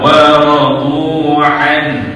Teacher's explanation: Ha di ujung tu bagi dengar sikit sampai ke makhraj dia.